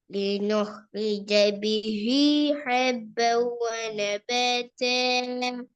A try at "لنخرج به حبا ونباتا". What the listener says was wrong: நீட்டுங்க. லினோ رج به حبا ونباتا. நீட்டவனு ஈடுபடுத்தலையே.